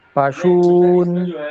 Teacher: पशून, दीर्घ लंबा कीजिए उसे, पशु ऊ को लंबा कीजिए